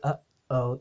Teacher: instead of saying oh you say uh oh you cut off that piece of air when in between the uh and the o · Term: glottal stop